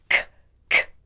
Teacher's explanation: first the easy way to say a k sound is to push the back of your tongue up to the roof or top of your mouth quickly then bring it down quickly there is no voice or sound from your throat